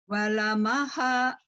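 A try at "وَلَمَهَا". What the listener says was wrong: Nggak ada yang panjang. Walamaha, walamaha, walamaha, walamaha.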